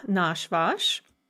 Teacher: five and the seven letter spelling rule come into effect so these are stem stressed the stress is always on that first ah